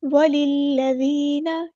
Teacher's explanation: لام مشدد ہے تو اس کو اچھے سے ادا کریں گے جماؤ کے ساتھ